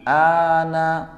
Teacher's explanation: Sebelum Bapak membaca lam sukun, a-nya dibaca panjangkan dulu. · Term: mad lazim